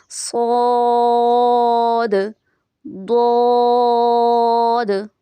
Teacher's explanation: صاد اور ضاد دونوں کے آخر میں دال کا لفظ ہے تو اس لیے اس میں قلقلہ کا آواز بھی ہم پڑھیں گے